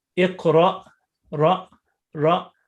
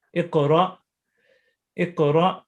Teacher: And Hamza with sukoon, we stop abruptly.